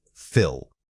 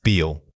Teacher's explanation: First feel, compare it with fill. The difference is in the vowel length. Is it a short tight I or a long drawn out e?